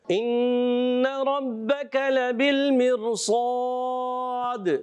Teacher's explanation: کاف کو باریک رکھنا ہے